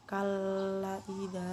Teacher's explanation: mad bertemu hamzah pada 2 kata, panjangnya 2 alif atau 4 harakat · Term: Mad jaiz mutasil